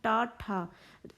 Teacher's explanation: आगे से जीभ आपकी पॉइंट से मुड़ती है और शेप लेते हुए फिर इसका उच्चारण करती है, तो मूर्धा, मूर्धन्य बोलते हैं।